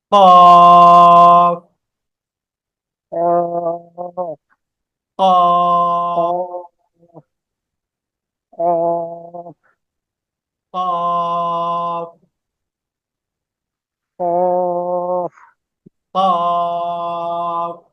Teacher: কফটা উচ্চারণ হয় জিহ্বার গোড়াটা তার বরাবর উপরের তালুর সাথে লাগিয়া জিহ্বার গোড়া জিহ্বার গোড়ার বরাবর যে তালু আছে সেই তালুর সাথে লাগবে একটু ডিপলি উচ্চারণটা হবে